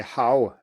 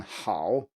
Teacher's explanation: the vowel sound, the start of it, is not as far back as it is in Mandarin. So if I say how in English and then how, you can hear that it's farther back, how.